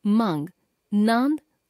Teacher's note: अनुनासिक का उच्चारण करते समय हवा नाक तथा मुख दोनों से बाहर निकलती है